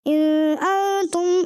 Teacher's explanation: ان میں غنہ نہیں تھا، اس میں آپ نے غنہ کیا